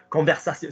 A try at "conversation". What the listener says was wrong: So in other words, you've got to slide up and slide down quickly. Conversation. Yeah, did you see how it nipped off your a? Conversation. So this, but is that a false bit on a? So again, so to achieve the a, you then went action. Yeah, conversation.